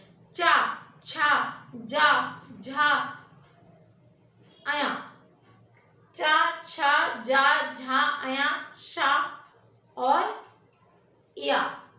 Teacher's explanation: जो जीभ है वो ऊपर तालु में लगती है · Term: तालव्य ध्वनियां